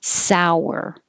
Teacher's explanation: you have a ow and then you um pull your lips back for the r so it makes a w sour so it doesn't look like there's a w but you